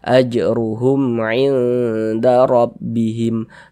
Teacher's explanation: Karena mim sukunnya tidak bertemu dengan huruf ba, tidak bertemu dengan huruf mim, tapi mim sukunnya bertemu dengan huruf ain, maka hukumnya izhar syafawi. Baca jelas, pendek saja.